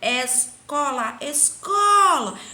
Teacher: Então, eu tirei o có, que é tônica. As demais, elas são átona. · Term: sílaba tônica